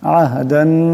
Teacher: আহদান এখানে দালের উপর দুই জবরে তুলবিন, এরপরে নুন আসছে, ঈদগাম হয়ে যাবে, ঈদগামের একালি পরিমাণ গুণনা হবে।